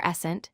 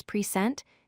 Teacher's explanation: noun stress on the first syllable and verb stress on the second syllable